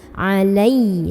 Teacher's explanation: karena ada Ya Sukun sebelumnya Fatah maka cara bacanya cukup dilembutkan jadi jangan dibaca panjang